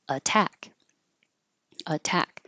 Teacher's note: And here the t's, two t's are between um two vowels, this a and this a. But the T is in the stressed syllable, so it can't change.